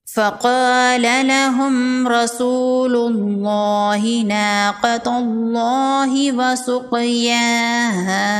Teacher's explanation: میم ساکن کے بعد را ہے، یہاں پر غنہ نہیں کریں گے، یہاں پر اظہار شفوی کا قاعدہ ہوگا۔